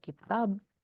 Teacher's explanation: ketika dia ada di akhir kata ya, misalnya seperti kitab, ya itu akan, ada de-voicing ya. Jadi, kalau kita dengar secara seksama bisa lebih, mirip kepada peh.